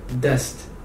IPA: dɛst